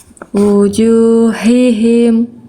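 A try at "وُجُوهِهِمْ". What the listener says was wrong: Yang kedua bagus, H yang pertama agak nuansa H kecilnya sedikit. Wujuhihim.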